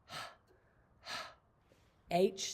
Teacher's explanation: It's an unvoiced sound. So we just hold our hand out so we can feel the air going past our hand.